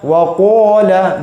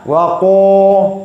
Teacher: Karena dia isti'la, tebal ya, terangkat suara, tekanan suara ke langit-langit.